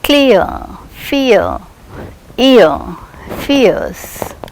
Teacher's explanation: The diphthong occurs as a glide from a centralized front unrounded vowel just above half close